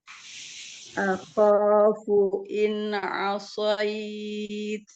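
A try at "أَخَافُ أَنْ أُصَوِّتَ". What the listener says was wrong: Ya, coba selesaikan dulu nun sukunnya. Jangan ina asoid. Akhafu in asoid.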